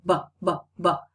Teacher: Also, try saying b and cover your ears. All right, when you say b and you cover your ears, you can perceive the vibration of the vocal cords.